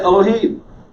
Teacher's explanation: elohim is a half vowel it doesn't get the full time that a segol would get